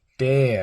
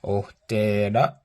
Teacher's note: your voice kind of falls in a falling tone, right? Ohtera.